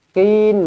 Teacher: So mad asli, qin mad arid lisukun. Boleh dibaca dengan 2, boleh dibaca dengan 4, boleh dibaca dengan 6 harakat.